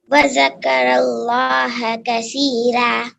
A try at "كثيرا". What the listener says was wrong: kasi. If we will say like kasi, then we will hear it like seen. So we have to say it softly like a tha. Kathira.